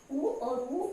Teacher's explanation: उ और उ ओष्ठ्य वर्ण है, इनको ओठ की सहायता से बोले जाते हैं।